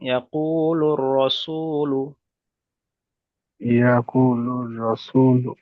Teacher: এর আগে এসে একে ওয়াও মাদ্দা বলে, ওয়াও মাদ্দাকে সর্বদা আকালি পরিমাণ টান দিয়ে পড়তে হয়। লামের উপরে পেশ এসছে, পেশটি হলো হারাকাত, হারাকাতের পর তাড়াতাড়ি পড়তে হয়, টান দেওয়া নিষেধ।